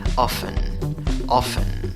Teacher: En la segunda sílaba, aunque la escritura lleva una T, según el diccionario Merriam-Webster, no pronuncias la T, solo pronuncia la F. Aunque en la escritura va una E, en la pronunciación va schwa, la que no es ni A, ni E, ni O. · A menudo se escribe con 5 letras y pronuncias la palabra con 4 sonidos. Divides la palabra en 2 sílabas. En la primera sílaba va la fuerza de voz, contando de izquierda a derecha.